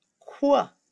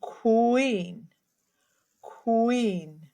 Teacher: Q borrows the C and the W sound Q. So when you see a Q, you need to say qu like in queen.